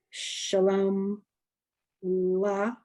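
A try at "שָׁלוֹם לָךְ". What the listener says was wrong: I don't hear it. Lach. should be a shva, a silent vowel, right?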